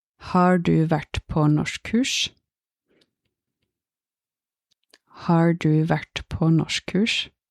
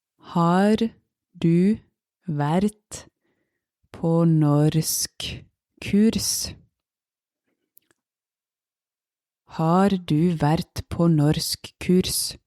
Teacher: In this sentence, there were actually 4 R's, 4 R, but none of them were pronounced.